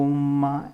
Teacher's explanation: ओम को थोड़ा लंबा बोलना होता है क्योंकि ओम जो है वो प्लुत होता है